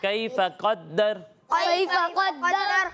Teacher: कौफ को पुर पढ़ेंगे और रा को पुर पढ़ेंगे, दाल को पुर नहीं पढ़ना, ठीक है। दाल को बारीक ही पढ़ना है, ठीक है।